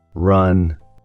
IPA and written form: rʌn (run)